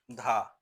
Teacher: धा वर्ण दंत वात्सर्य महाप्राण घोष व्यंजन का उदाहरण है